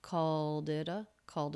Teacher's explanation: Ed ending in the word called is a single D sound because the sound before was voiced the L Sound